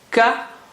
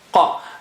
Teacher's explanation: Ka is flat, normal letter, ka, whereas qa is high sounding